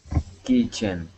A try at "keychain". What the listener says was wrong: All right, now here, instead of saying chen, we're going to use a long A sound. Keychain. Keychain.